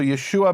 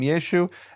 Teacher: In this dialect of Aramaic, they didn't pronounce the ayin, or maybe even the dialect of Hebrew. In Northern Hebrew, they didn't pronounce the ayin.